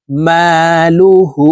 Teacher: হা উল্টা পেশ হু হার উপরে উল্টা পেশ থাকার কারণে এই হা কে দুই ঠোঁট গোল করে এক আলিফ টেনে পড়বো